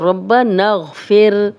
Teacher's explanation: را کو باریک پڑھیں گے کیونکہ را پہ زیر ہو تو باریک پڑھی جاتی ہے